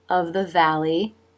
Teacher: Lily of bottom lip up for the V. And you don't even see the tongue for the th there because it's so quick